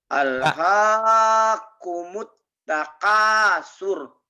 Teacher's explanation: Nah, surnya jangan panjang.